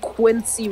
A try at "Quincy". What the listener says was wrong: It sounded like that he said Quitsy instead of Quincy.